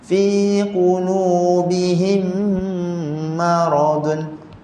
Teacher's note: masa kita fi qulubihim, him dekat sini nak panjang sikit, dengung